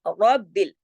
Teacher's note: रा को मोटा पढ़ेंगे क्योंकि रा पे जबर है।